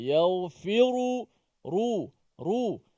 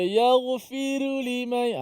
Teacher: Jangan ra tu dimatikan. Dan dibaris depankan dalam keadaan tebal. Imam kita, riwayat Imam Hafs an Asim membaca dengan tebal.